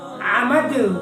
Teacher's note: آگے ہم مشق کرتے ہیں، عین زبر ع، میم زبر ما، عم، دال دو زیر دین، عمدین، وقفاً عمد، کلکلا کریں گے کیونکہ دال ساکن ہو رہی ہے تو حروف کلکلا میں سے دال ہے تو کلکلا کریں گے